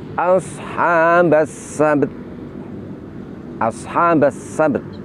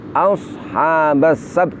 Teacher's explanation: Jadi ba dan ta sama-sama kita tampakkan makhraj dan sifatnya.